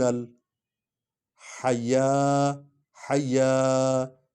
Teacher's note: یا کو زیادہ لمبا کرنے کو اس پر کھڑا زبر ہے